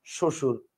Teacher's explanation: ব ফলা আছে কিন্তু বফলার উচ্চারণটা আপনি করতেছেন না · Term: ফলার ব